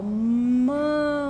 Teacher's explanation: Mamãe, sendo que é um fonema nasal e que precisa fazer coarticulação antes com o A do mamãe, né? Então, o E do mamãe, ele começa lá no primeiro A, ó, mamãe.